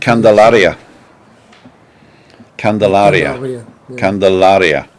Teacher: the second to last syllable of every word is the emphasis